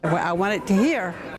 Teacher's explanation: The second feature here is a glottle replacement of final consonants. You can hear the glottle stop instead of a t. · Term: glottal stop